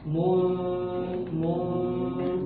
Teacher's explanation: Perhatikan itu tanwin bertemu fa ya, tidak boleh ditebalkan. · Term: tipis